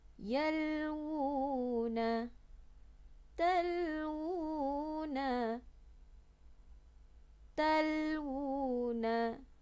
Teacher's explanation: waw yang berdhammah bertemu dengan waw kecil. Ini juga mesti dibaca dengan kadar 2 harakat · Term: mad asli